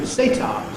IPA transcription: s.eɪ.t.ɑː